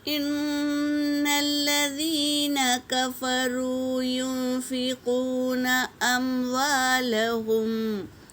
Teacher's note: نون پر تشدید ہے میری بہنوں، غنہ کریں گے، اور یا ساکن سے پہلے زیر ہے یا مدہ، اور واو ساکن سے پہلے پیش ہو واو مدہ، اور دیکھو نون ساکن کے بعد اخفا کے 15 حرفوں میں سے فا آیا ہے، تو یہاں پر اخفا ہوگا۔